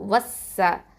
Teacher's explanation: இதுக்கு இடையில இருக்கக்கூடிய அலிஃப் லாமை வந்து நம்ம உச்சரிக்க மாட்டோம். அதாவது ஹம்சத்துல் வசலையும் லாமையும், லாமு தாரீஃப் அப்படின்னு சொல்லுவோம். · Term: ஹுருஃபு ஷம்சியா